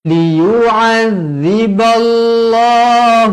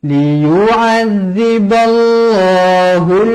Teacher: lafzul jalalah dibaca tebal kerana sebelumnya berbaris atas